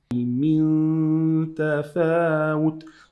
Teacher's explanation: This noon with this ta, we have to hide the noon into the ta. Why? Because noon is sukoon and it's an empty noon here.